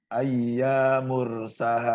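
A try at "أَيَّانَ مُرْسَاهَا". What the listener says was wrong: Ayyana mursaha. Jadi panjang pendeknya harus diperhatikan.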